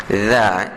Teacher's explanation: Dha ni huruf yang keluar daripada hujung lidah, dia sentuh sedikit hujung gigi kacip kita, dha. Dan bezakan dengan huruf za yang macam ra, itu hujung lidah sentuh dengan kita punya pangkal gigi bawah, za. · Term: huruf dha